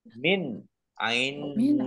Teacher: nun sukun bertemu dengan huruf Ain bacaan izhar dibaca jelas